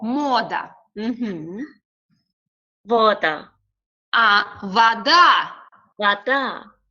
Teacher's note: O is stressed. That's why we pronounce O.